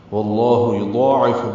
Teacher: لام اس میں جلالہ واو کی زبر کی وجہ سے پر پڑھیں گے ، واللہ یضاعف، ضاد بھی پر ہے، عین وسط حلق سے